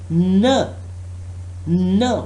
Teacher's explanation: that is a nasal stop which involves airflow through the nose. · the tip of the tongue is touching the alveolar ridge, the back side of the upper front teeth